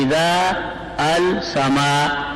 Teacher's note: اب اذا کے بعد الف بھی نہیں پڑھ رہے, ال کے بعد ال میں حمزہ بھی نہیں پڑھ رہے, ال کا لام بھی نہیں پڑھ رہے